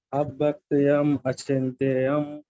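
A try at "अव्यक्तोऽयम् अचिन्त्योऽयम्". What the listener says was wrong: Yam nahi, ayam. A is silent there. Avyaktoyam achintyoyam.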